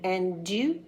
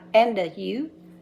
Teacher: we want the D to go right into the U. And you, not and a you.